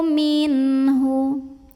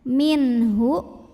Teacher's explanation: Minhu hukumnya adalah idhar halqi, sebab nun sukunnya menghadapi huruf halqi atau huruf tenggorokan yaitu ha. Maka nun sukun kita bunyikan dengan jelas bunyi n-nya, idhar, tidak perlu kita tahan.